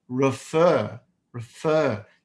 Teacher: The stress is on the FER, refer.